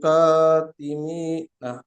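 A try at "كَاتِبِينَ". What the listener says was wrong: মি হয়ে যাচ্ছে বিনা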